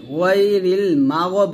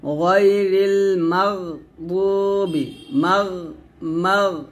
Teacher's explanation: তো গয়ন কলকলা হরফ না, এখানে বলতে হবে গয়রিল মাগদুবি, মাগ মাগ এরকম ভাবে আপনারা এখানে গয়নটা মোটা করে পড়বেন, কলকলা করা যাবে না কিন্তু